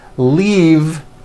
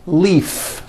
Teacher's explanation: leave is very different from the word leaf like from a tree which has an unvoiced f